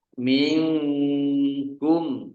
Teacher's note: Nun sukun bertemu dengan huruf kaf, bacaan ikhfa, dibaca samar-samar